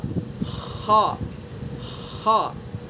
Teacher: خا کا مخرج ادنائے حلق یعنی حلقہ منہ کی طرف والا حصہ